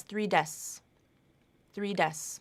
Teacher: So this phrase, 3 desks, SKS, that K might drop out and be pronounced as 3 desks, 3 desks.